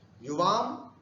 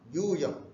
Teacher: युवाम में एक समय लगा, ह्रस्व है उच्चारण करने में, किंतु यूयम यहाँ 2 समय लग रहा है ना